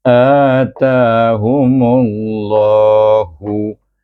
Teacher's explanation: dan lam jalalah itu hendaklah dibaca tebal dengan dua harakat